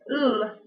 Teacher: The lateral consonant l is created through alveolar articulation. The tongue is raised to the alveolar ridge, allowing air to escape round the sides of the tongue.